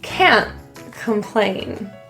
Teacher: The word can't is generally quite emphasized, and that vowel will be fully pronounced